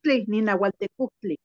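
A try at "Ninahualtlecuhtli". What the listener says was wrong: Es con TL, sería Ninahualtlecujtli. Con tle, de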